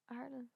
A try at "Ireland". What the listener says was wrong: No, Ireland. Like it's not spelled like Areland. Ireland.